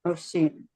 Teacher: pita suara dalam kondisi hams pada huruf sin itu kita lihat dia terbuka.